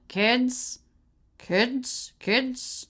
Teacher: we've got the scoop down and up that's what lets us know that he's going to say more that's the intonation that says I'm not done it's different than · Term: continuation kind of intonation